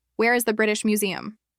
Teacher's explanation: No rising tone, no sign of a question in his voice.